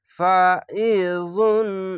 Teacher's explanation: আইনটিকে মোটা করে গলা চেপে পড়বেন।